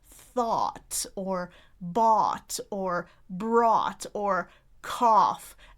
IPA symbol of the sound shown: ɔ